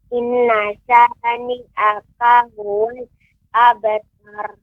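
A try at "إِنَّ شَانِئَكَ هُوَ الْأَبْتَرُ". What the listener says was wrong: Ya, kemudian nun yang bertasydid juga harus ditekan lebih dahulu, lebih diberi jeda atau diberi tempo. Inna syani'aka huwal abtar. Abtar. Tar. Terus dilatih di rumah pengucapan ra tebal. Abtar. Wanhar. Kautsar, ya, sehingga semoga ke depan pengucapan ra-nya ini menjadi lebih baik dan benar.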